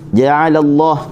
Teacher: kalimah Allah dibaca dengan tebal kerana sebelumnya bagi atas.